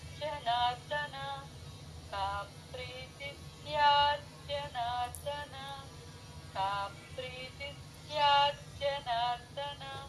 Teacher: జ కింద జ వ ఒత్తుంది చూసుకోండి అందరూ కా ప్రీతిస్యా జనార్ధన అలాగే జనార్ధన కి ర కింద ద మామూలు ద అండి మహాప్రాణం లేదు